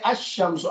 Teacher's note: اچھا اب مجھے بتائیں کہ یہاں آپ نے لام کو پڑھا ہے اور یہاں لام کو نہیں پڑھا ہے، بلکہ حمزہ کو ڈائریکٹ شین سے ملا کے الشمس کر دیا · اب یہ لام جو ہے پڑھا نہیں جائے گا، سائلنٹ ہو جائے گا